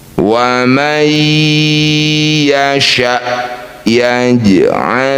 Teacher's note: Yang ini jim sukun di tengah bacaan disebut qalqalah sughra. Bunyi jim dipantulkan, pantulannya kecil saja, jangan berlebihan.